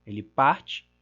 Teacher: em parte, nós temos a tônica caindo na penúltima sílaba, é uma paroxítona